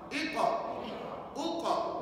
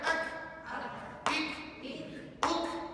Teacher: Dia guna pangkal lidah tapi dia ke depan sedikit. Kalau Qaf ke belakang, kalau Kaf ke depan.